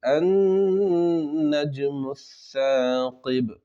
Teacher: یہاں پر نون مشدد کا گنہ ہوگا، گنہ اس طریقے سے ہوگا کہ زبان کو اوپر تالو سے لگانا ہے اور پھر گنہ کرنا ہے